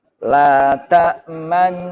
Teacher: Jadi dengung masuk ke gunah, baru mencucu, kembali lagi normal. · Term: ismam